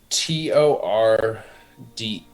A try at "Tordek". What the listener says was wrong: So close. Tordek. No A.